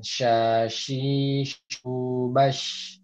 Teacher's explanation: makhraj huruf shin itu ada di tengah lidah bertemu dengan langit-langit